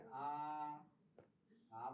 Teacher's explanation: আ বললে মুখটা সব থেকে বেশি খোলা যায় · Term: বিবৃত স্বর